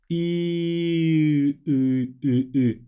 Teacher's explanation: U is E, sound E, like in meat, but the tongue moves back a little bit. So it's E, and then you move it back.